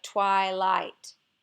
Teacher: twilight really is a word that we have equal stress on both syllables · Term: equally stressed syllables